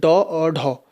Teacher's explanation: क्योंकि उत्क्षिप्त जो व्यंजन होते हैं, उच्चित व्यंजन जो होते हैं वो जिसमें जीवा का अग्रभाग तालु से स्पर्श करके बहुत तेजी से झटक मारता है, तो वो होता है जैसे डॉ और ढौ। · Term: उत्क्षिप्त ध्वनि